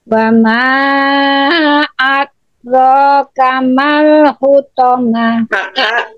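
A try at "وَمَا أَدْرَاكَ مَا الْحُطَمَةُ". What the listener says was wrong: Mantul ya.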